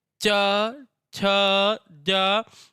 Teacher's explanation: देखिए आप कभी भी बिना अपनी इस जिह्वा को बिना तालु में सटाए चाछा जाझा का उच्चारण नहीं कर सकते। देखिए जब हम बोलेंगे च, छ, ज, तो जिह्वा जो है वो जाके तालु में टकराएगी